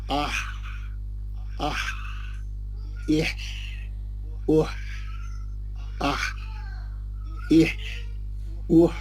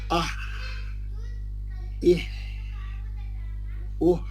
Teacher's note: इब्तिदा में छोटा सा एक हरकत का आवाज आ रहा, वो अलिफ के जबर जेर पेश का है, हा का आवाज नहीं है, हा का आवाज खाली वो सांस का, वो हवा का है बस, आह। और इसमें क्या है, कंटिन्यूटी रहना आपके साउंड में, आह बोल के नहीं जाना, झटके मारे तो काम नहीं चलता इसमें डिटेल में पढ़ना, लंबा, आह एह ओह।